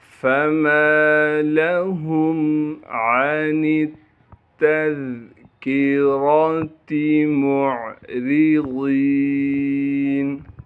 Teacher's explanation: را کے نیچے زیر ہونے کی وجہ سے را کو باریک کر کے پڑھیں گے۔